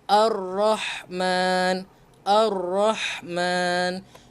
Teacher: Lam ini tidak dibaca. Masukkan terus. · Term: Syamsiah